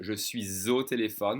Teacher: I'm supposed to connect that silent S to the next vowel sound, saying je suis au téléphone with a Z sound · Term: liaison